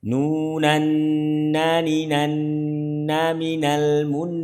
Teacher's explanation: Ya, ini ditekan ya. Ditekan seperti tasydid. Nun ditambahi kadar gunahnya, ditambahi panjangnya. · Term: nun bersukun karena waqaf